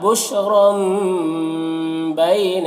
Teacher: تنوین کو میم سے بدل کر غنہ اور اخفا کے ساتھ میں پڑھیں گے، اس کو اقلاب کہتے ہیں۔